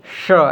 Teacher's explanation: इसका जो है जीभ एकदम मूर्धा में चली जाती है, श ऐसा करके इसका उच्चारण होता है।